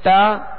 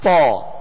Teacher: تا کو باریک پڑھیں گے اور تو کو پر یعنی موٹا پڑھیں گے